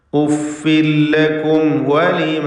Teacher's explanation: മീമും വാവും 2 ഷഫവിയായ അക്ഷരങ്ങളാണ്, ചുണ്ടിൽ നിന്നും ഉത്ഭവിക്കുന്ന ഓഷ്ഠ്യ അക്ഷരങ്ങളാണ്. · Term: ഇൽഹാർ ഷഫവി